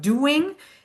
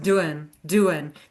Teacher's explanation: The G ending oftentimes gets dropped in a natural speech. So instead of doing, it's just doing, doing, because we don't actually need it in casual speech.